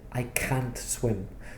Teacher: I said, I can't swim. So because there was stress on can't, you knew, it must be negative because he stressed it.